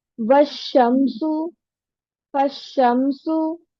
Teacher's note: और अगर ये हमजा लाम अल से पहले कोई लेटर ज्वाइन करके पढ़ना है हमें, तो फिर शमशी में हमजा और लाम दोनों नहीं पढ़े जाएंगे, अलिफ और लाम दोनों ही नहीं पढ़े जाएंगे